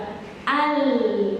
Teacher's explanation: Lidah kita itu menutup dengan sempurna pada makhraj lam, sehingga suara itu mencari celah untuk keluar. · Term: al-inhiraf